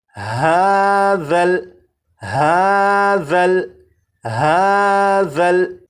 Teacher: اب اس لفظ کو پڑھیں گے اور اس لفظ میں یہاں پر دیکھیں یہ ذال ہے، ذال کو نرمی سے پڑھیں گے، یعنی سی ٹی کی آواز کے بغیر پڑھیں گے، اور اس حرف کی سی ٹی کی آواز کو ختم کرنے کے لیے زبان کی نوک کو اوپر کے سامنے کے 2 دانتوں کے سرے سے جب لگائیں گے تو ذال کے اندر جو سی ٹی کی آواز ہوتی ہے وہ ختم ہو جائے گی